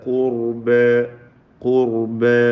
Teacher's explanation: ഖുർബ ഖാഫിനും റാഇനും തഫ്ഖീം. ഖുർബ അലിഫിൽ വഖഫ് ചെയ്യുക.